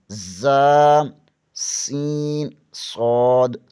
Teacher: زبان کی نوک ثنائے سفلی یعنی نیچے والے دانتوں سے لگے تو ز، سین، صاد ادا ہوتے ہیں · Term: حروف صفیریہ